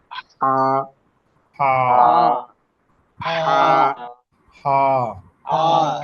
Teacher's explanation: এটা হলো হলকের মাঝখান থেকে উচ্চারণ করতে হয় খুব শক্ত করে, শক্তি দিয়ে, হা। এটা হলো পার্থক্য।